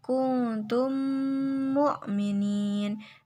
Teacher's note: Hukum bacaan disebut idgham mutamasilain apabila mim sukun bertemu dengan mim yang sejenis. Cara membaca idgham mutamasilain yaitu dengan cara menyuarakan mim rangkap atau ditasydidkan dan wajib dibaca dengung. Contohnya, kuntum mu'minin.